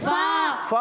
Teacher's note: फ़ा वाव पेश फू, वाव साकिन से पहले पेश, वाव मद्दा है। फ़ा की अदायगी ऊपर वाले दांतों के किनारे, नीचे वाले होंठ के तर हिस्से से जब लगते हैं तो अदा होता है फ़ा